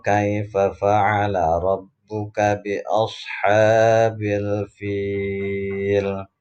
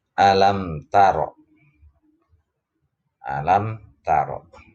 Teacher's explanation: Ro-nya ini adalah ro tafkhim. Kenapa ro tafkhim atau ro tebal? Karena ro-nya berharokat fathah.